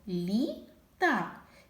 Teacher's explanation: як ми чуємо перший звук прим'якшено ль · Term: М'який приголосний